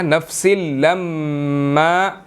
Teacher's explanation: میم مشدد ہے تو یہاں پر ہم نے غنہ کرنا ہے, ٹھیک ہے, ناک میں اس کو پڑھنا ہے